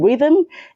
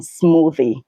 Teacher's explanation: We don't have the voiceless sound in rhythm, in smooth, and in smoothie.